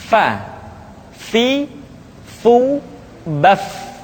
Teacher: Diucapkan dengan menyentuhkan ujung dua gigi seri kita bagian atas dengan bibir bawah bagian dalam. Fa. Seperti kita mengucapkan huruf F di dalam huruf Latin. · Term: huruf Fa